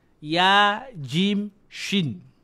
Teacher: Ya, jim, shin. Dekat pertengahan lidah.